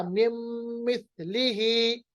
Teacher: نون ساکن کے بعد میم، تو نون کی آواز یعنی غنہ برقرار رہا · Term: ادغام باغنہ